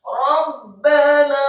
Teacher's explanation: Kata Rabbana setelah wakaf yang ketiga, rohnya satu harokat tebal, kemudian ba-nya ditasydidkan fathah